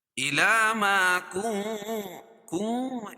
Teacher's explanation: اخفاء حقیقی ہے تو ناک میں آواز کو چھپا رہے ہیں